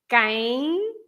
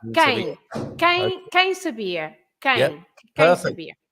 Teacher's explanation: you never pronounce an M at the end. So the M is there just to make the nasal A or I or E.